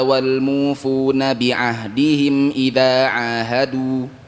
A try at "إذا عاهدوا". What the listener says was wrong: Idza ahadu, panjangkan dunya. Wal wawunya tidak ada gunnahnya. Jadi bukan berdengung wal mufun enggak. Ya, waw matnya tidak ada gunnahnya.